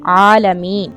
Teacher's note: आइन की आवाज और साथ में इसके ऊपर क्या है? खड़ी जबर, थोड़ा सा लंबा करेंगे इसे।